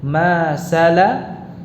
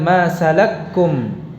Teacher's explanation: masalakakum itu tidak dibaca dengan masalakkum, tetapi masing-masing dibaca dengan jelas